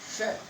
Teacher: जिस जगह पर च बोलने से जीभ टकराती है वहीं पर श बोल करके अपन उच्चारण किया जाना चाहिए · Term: तालव्य श